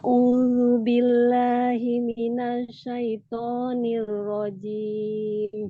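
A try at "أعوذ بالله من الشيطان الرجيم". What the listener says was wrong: ainnya sininnya kuatkan lagi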